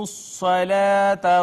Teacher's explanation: صاد حروف مستعلیہ میں سے تھی, اس کو ہم نے پر کر کے پڑھا